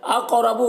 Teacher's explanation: قاف کو پر پڑھنا ہے، حروف مستعلیہ میں سے ہے اور قاف میں قلقلہ کرنا ہے